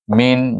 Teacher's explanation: Min jangan panjang, jangan dengung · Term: izhar halqi